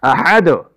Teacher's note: دال پر چونکہ قلقلہ ہے اس کے لیے دوبارہ وقف کی حالت میں اس کی آواز کی ڈبلنگ ہوئی ہے